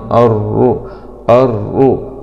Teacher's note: لام سكون شمسية مدغمة في الراء المشددة مع الضم